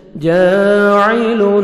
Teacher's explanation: الف مدہ 1 سیکنڈ جیم کو کھینچیں گے، عین کو اپنے صحیح مخرج سے ادا کریں گے۔